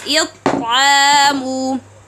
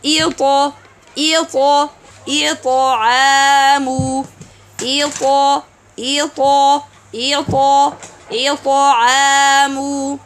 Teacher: When we have Ta sukun, the articulation point of Ta completely closed, then open. Some may do this Ta as it'amu. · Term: qalqala